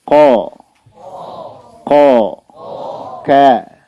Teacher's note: Yang jelas huruf qaf dan kaf itu dari pangkal lidah diangkat ke atas ketika sukun ya.